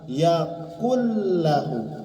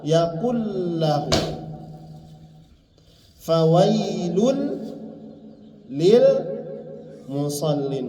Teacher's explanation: nun sukun masuk ke ke huruf lam yaaklahu ya jadi disatukan nunnya hilang masuk ke huruf lam